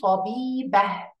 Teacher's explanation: We can also pronounce the word طبيبةٌ without pronunciation of the last letter and it will be طبيبة.